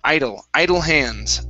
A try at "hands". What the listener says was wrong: give me a D instead of hems. It's hands, hands. So your lips should not close on that word.